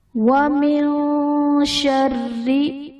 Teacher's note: نون ساکن کے بعد حرف اخفا میں سے شین ہے، یہاں پر اخفا کا غنہ کریں گے، را کے نیچے زیر ہے، را کو باریک پڑھا جائے گا۔